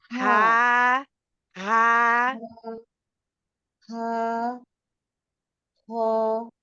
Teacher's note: हा को भी खींचें दो अलिफ के बराबर दो हरकत के बराबर